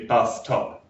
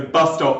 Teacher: bus stop becomes literally bus top in fast speech, but in separated speech, it's bus stop.